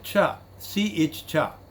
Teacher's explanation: Cha as well as sha. It is palatal and it is also voiceless as well as aspirated sound.